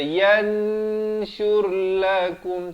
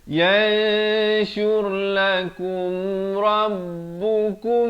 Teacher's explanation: samarkan di antara nun dan shin itu. Kadar panjang 2 harakat. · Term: ikhfa